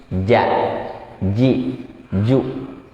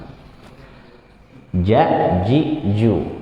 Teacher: Ya, dia huruf jahar, jadi nggak keluar angin sedikit pun. Bukan termasuk huruf hamas. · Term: jim